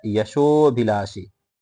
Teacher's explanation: यहां पर ओ की मात्रा के साथ त्रिमात्रिक एक प्लुत स्वर भी आ गया।